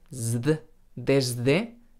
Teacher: hay gente que pronuncia la S sonora por influencia de la D sonora. Por ejemplo, la palabra desde.